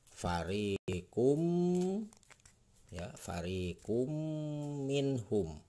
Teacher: Nah, ini domah tain ketemu dengan huruf mim. Mimnya berarti ini huruf idgham biguna, maka dibacanya akan dengung.